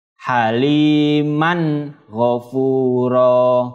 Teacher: Fathah tanwin bertemu dengan ghain. Fathah tanwin dibaca jelas ketika bertemu dengan huruf halqi. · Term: izhar halqi